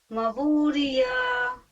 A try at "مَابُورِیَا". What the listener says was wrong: میم پہ منہ کھولیے، الف مدہ ہے نا. مابوریا.